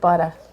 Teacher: know it's New York yeah you know it's like butter yeah you drop the r at the end it's not even really there